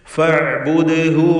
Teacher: ഐൻ വ്യക്തമാക്കി ഉച്ചരിക്കുക. ഫഅ്ബുദ്ഹു ദാലിൻ്റെ സുക്കൂൻ ഖൽഖല സൂറ നൽകി ശബ്ദം ചലിപ്പിച്ച് ഉച്ചരിക്കുക. അന്ത്യത്തിൽ വന്ന ഹ ദമീറിന് ദീർഘമില്ല, കാരണം മുമ്പിൽ സുക്കൂൻ ഉള്ളതുകൊണ്ട്.